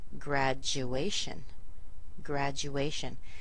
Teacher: We have a little Y sound in here. It's not written, but the sound is there. That's why it gets combined together and you'll hear something like graduation. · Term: J